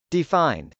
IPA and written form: dɪfˈaɪnd (defined)